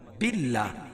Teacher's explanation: اللہ کے نام سے پہلے زیر ہے تو اللہ کا نام باریک پڑھا جائے گا